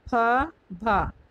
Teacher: ओष्ठ में फ, भ ये महाप्राण हो जाएगा